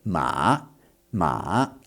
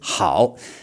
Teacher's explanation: It goes down and then it comes back up.